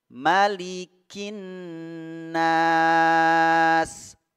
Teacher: Tidak ada pemanjang harokat pada mimnya, harokat fathahnya. Maknya pendek.